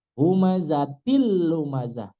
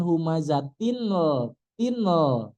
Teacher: ini namanya adalah meleburkan huruf nun tanpa gunah. Nunnya dileburkan tapi enggak pakai gunah. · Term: idgham bila ghunah